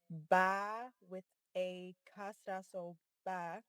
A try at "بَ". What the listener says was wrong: Fatha on top. Fa. Ba. Fatha.